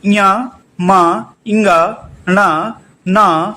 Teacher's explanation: इनका जो उच्चारण स्थान होता है वो होता है अनुनासिक या नासिका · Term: अनुनासिक वर्ण